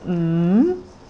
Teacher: if you do it slowly you will see that the beginning point is lower and the ending point is higher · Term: rising tones